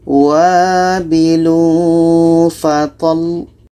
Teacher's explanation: Kita tekan lamnya karena di sini ada 2 lam.